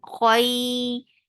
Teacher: make kha heavy and make it two counts long